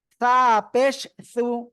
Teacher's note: জিব্বার আগা সামনের উপরে দুই দাঁতের আগায় লাগাবেন